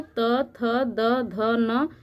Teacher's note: त थ द ध न इसको दंत ध्वनि कहते हैं क्योंकि यह हमारे दांत के स्पर्श से बोली जाती है इसलिए इसको दंत ध्वनि कहते हैं